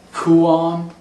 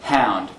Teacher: The K, the voiceless stop K, turns into an H.